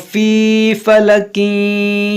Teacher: तनवीन के बाद फ़ा है तो यहाँ पर इख़्फ़ा होगा